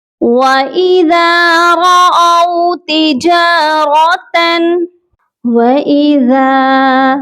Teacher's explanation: ذال کو نرمی سے پڑھا جائے گا اور ایک الف کے برابر لمبا بھی کریں گے کیونکہ اس کے ساتھ الف مدہ ہے۔